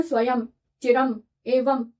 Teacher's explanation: अब ध्यान दें कि स्वयं जैसे अंत में जो अनुस्वार लगा होता है उसकी साउंड म ही होती है ना। स्वयं चिरम एवं म होती है।